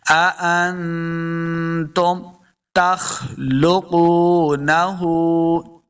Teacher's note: नून साकिन के बाद ता हुरूफ इख्फा से आ गया, तो यहाँ पे इख्फा का कायदा है, यानी गुन्ना करके पढ़ेंगे